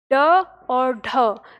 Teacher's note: जीभ पहले ऊपर उठती है, मूर्धा को छूती है और झटके के साथ नीचे गिरती है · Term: उत्क्षिप्त व्यंजन